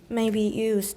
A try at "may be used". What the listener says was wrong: Do you hear a glottal stop? 它还是有. You're saying may be used. We want may be used. 你就不要停下来，从 e 直接到 use 试试看。